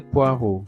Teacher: Le E, le A et le U se prononce O. Et le X final ne se prononce pas.